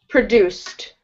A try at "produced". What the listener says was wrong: Yeah, so this is the same problem with ED endings. Where your ending should not sound like id. It should sound like a T here, produced. And there are some rules that you can follow.